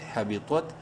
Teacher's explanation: حمزہ زیر ای، کاف زبر کا، کافر فأولئک، ح زبر ح با زیر بھی، طا تا زبر طا، طا کو منہ بھر کے پڑھیں گے